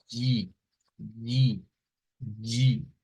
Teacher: es un sonido en donde se mezcla realmente una D con el sonido G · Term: un africado